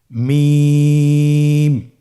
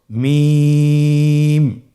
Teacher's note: 2 ঠোঁট চেপে ধরে আমরা উচ্চারণ করব